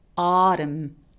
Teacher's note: 단어 끝에 M과 N이 함께 있을 때 이럴 때 그냥 N 발음을 무시하고 M 소리만 냅니다.